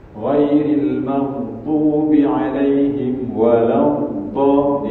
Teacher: Dad makhrajnya di tepi lidah, ya, tepi lidah dengan gigi geraham atas.